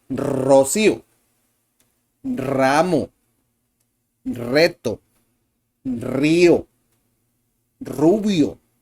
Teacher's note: every time a word in Spanish starts with the letter R we use the strong sound the rolling tone · Those words start with R, and we use the strong R sound, the rolling tone sound for those words. Every time you find a word in Spanish that starts with the letter R, we always use the strong R sound.